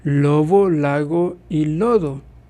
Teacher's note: Y sé que oclusivos sonoros, que son BDG, vibran las cuerdas vocales. En algunas ocasiones el BDG se convierte en fricativa, ejemplo cuando está entre dos vocales